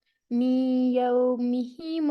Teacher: میم کو جب ہم یا سے ملائیں گے تو ہم مرج کریں گے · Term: ادغام